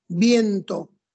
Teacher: yo junto dos vocales la i y la e bien y las pronuncio juntas eso es dipton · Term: diptongo